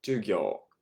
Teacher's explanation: Again, we are elongating this o sound.